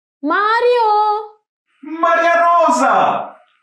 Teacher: move the tip of your tongue super fast up and down when you say the Russian r.